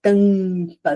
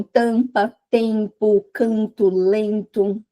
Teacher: Nasais porque eles vão passar não pela boca, mas eles vão passar de certa forma pelo pelas vias nasais, pelo nariz mesmo, né? Então se você falar a palavra tampa, você vai perceber que parte do ar tá ali passando ampa pelo pelo pela via nasal. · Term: sons nasais